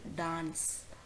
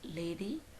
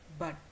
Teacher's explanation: the consonant when it is articulated the vocal cords vibrate and it occurs initially as in the word dance medially as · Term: alveolar consonant